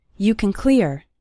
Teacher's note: The word can sounds like kn.